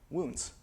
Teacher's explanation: This we all pronounce with Canadian raising today